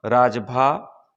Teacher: अब रगण, राजभा, इसमें रा दीर्घ है, ज लघु है और भा दीर्घ है